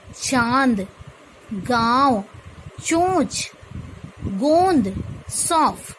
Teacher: अनुनासिक का उच्चारण तब होता है जब ध्वनि मुख के साथ साथ नाक से भी निकलती है। इसको चंद्र बिंदु तथा बिंदु दोनों में ही दर्शाया जाता है।